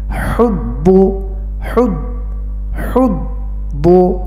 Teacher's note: আইন এবং হা একই জায়গা থেকে উচ্চারণ করতে হয়, অর্থাৎ হলকের মধ্যখান হইতে আইন হা উচ্চারণ করতে হয়।